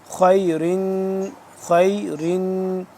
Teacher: خا یا زبر خی، خا کو ہم پر کر کے پڑھیں گے